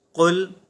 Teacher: یہاں پر ہم نے قل ل یہ نہیں پڑھا اس طرح نہیں پڑھا کیوں کیونکہ یہ حروف قلقلہ میں سے نہیں ہیں